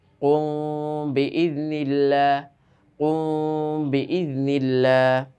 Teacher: তো এখন এই জন্য এই মিমটাকে আমরা কি করতে হবে? একটু নাকের ভিতর লুকিয়ে গুন্না করে পড়তে হবে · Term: ইখফায়ে শাফাওয়ি